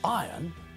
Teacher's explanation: this is wrong the word is spelled I are o n when we pronounce the word we don't pronounce the letter R